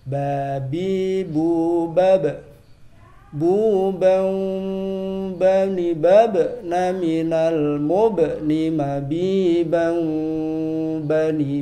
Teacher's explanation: Huruf ba itu keluar dari perut bibir bawah bertemu perut bibir atas. Jadi cukup ditempelkan saja, tidak usah terlalu ditekan.